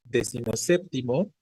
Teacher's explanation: Décimo pierde su sílaba tónica y solo la conserva el segundo componente, séptimo. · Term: esdrújula